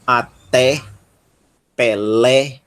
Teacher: tem som de é aberto como em até Pelé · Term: E aberto